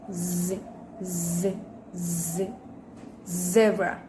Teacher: With manner of articulation, fricative, and place of articulation, alveolar.